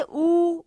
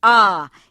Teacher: जब वर्तुल का उच्चारण करते हैं जैसे ऊ, तो एकदम गोलाकार जैसे वर्तुल जैसे बन जाते हैं, और जब अर्धवर्तुल का उच्चारण करते हैं आ, इसमें हमारे वर्तुल जैसी स्थिति नहीं आती, थोड़ा सा होंठ गोलाकार स्थिति में आता है।